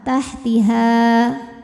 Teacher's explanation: nunnya dibunyikan samar-samar menuju ta disertai bunyi dengungan Min tahtihal tahtiha jika berhenti di ha hukumnya adalah Mad Thobi'i karena ada Alif didahului baris fathah jika berhenti panjang dua harakat tahtiha namun jika wasal madnya gugur han-nya Jadi pendek ya tahtihal